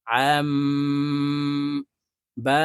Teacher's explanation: তানভীনের পরে ইখলাবের হরফ বা আসছে তাই এই ছোট্ট মিম দ্বারা পরিবর্তন করিয়া গুন্না সহিত পড়তে হবে